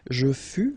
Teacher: keep in mind that final S is not pronounced